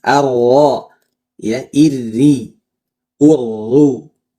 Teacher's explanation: Sekarang attakrir ya secara bahasa takrir berarti berulang-ulang atau secara istilah ada getaran ujung lidah ya bergetar. Nah, itu satu aja ya jangan banyak atau tidak ada yang menyebutkan ee jumlah getarannya tapi contohnya aja ya.